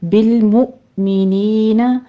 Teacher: مؤ پہ تھوڑا سا جھٹکا دیں گے، حمزہ ساکن ہے، نی میں یا مدہ.